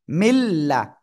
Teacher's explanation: গুন্না ছাড়া মিলিয়ে পড়বো